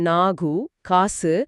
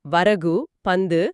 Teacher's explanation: ஆமா, குற்றியலுகரங்கிறது ஒரு நெட்டெழுத்துக்கு அடுத்தோ, உதாரணம் நாகு, காசு, இல்ல பல எழுத்து தொடர்ந்து வர்ற சொல்லோட கடைசிலையோ, உதாரணம் வரகு, பந்து, வல்லின மெய் மேல கு, சு, டு, து, பு, ரு வரும்போது அந்த உகரம் முழுசா ஒரு மாத்திரை ஒலிக்காம அரை மாத்திரையா குறுகிடும் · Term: குற்றியலுகரம்